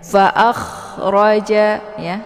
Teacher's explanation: Ra ini hukum bacaannya tebal ya karena ra berharokat fathah